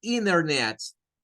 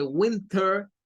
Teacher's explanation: no la pronuncian y cambian la t por otra n